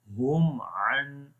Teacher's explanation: تو اظہار شفوی کیسے ہوتا ہے، یعنی کہ میم کو اپنے مخرج سے ظاہر کر کے پڑھیں۔ اور میم کا مخرج دونوں ہونٹوں کے خشک حصے آپس میں جب ملیں گے یعنی باہر والے، تو اس وقت میم ادا ہوگا اور وہاں پر میم کی آواز ظاہر ہوگی۔